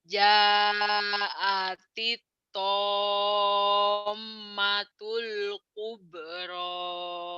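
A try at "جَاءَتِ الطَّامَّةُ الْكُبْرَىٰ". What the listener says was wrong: Tasjidnya kurang mantap sama jangan jaatit. Kalau jaatit itu atit, akit dong atit. Ini kan dari T ke to, jaatiop gitu ya. Kubur tom mimnya ditahan karena gunnah.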